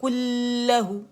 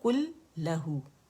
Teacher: اور لام پہ ٹکنا نہیں ہے، اس کو غنہ نہیں بنانا ہے. بعض لوگ کیا کرتے ہیں کلہو، یہ نہیں کرنا، اس کو جسٹ جماؤ دینا ہے، 2 لام ادا کرنے.